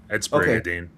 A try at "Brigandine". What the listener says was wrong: It's not It's not a silent N. There's no silent end.